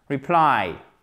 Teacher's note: Accent tonique sur la seconde partie. Reply et pas reply.